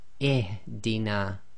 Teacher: The second letter is always going to be sakin, but the third letter carries a kasra, so the rule is we read the Hamza-Tul-Wasl as if it's carrying a kasra. So that's why we say ihdina.